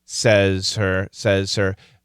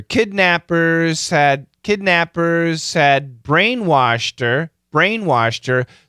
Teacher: the faster we say it these H's can disappear